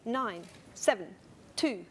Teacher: counting to a rhythm you would say nine seven two so you just kind of swallow the second syllable to keep on the beat